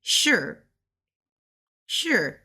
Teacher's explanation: this is a second tone cuz it's going up